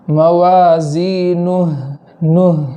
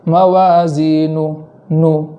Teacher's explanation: اور آخر میں ہا کو وقف کی حالت میں ساکن کر دیں گے، اس کو اوپر جزم پڑھیں گے، اور جزم پڑھنے کے اندر اس بات کا خیال رکھیں گے کہ ہا میں آواز جاری رہے، جیسے موازینہ نہ اس طریقے سے پڑھیں گے۔